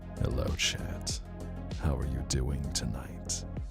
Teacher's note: the male e-boy VTuber who just uses all the vocal fry and goes super low